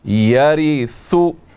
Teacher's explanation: را کے نیچے زیر ہے، یہاں پر را کو ہم باریک کر کے پڑھیں گے